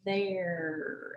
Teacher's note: the i in the middle because it is pronounced air there it kind of sounds like a long a sound not an e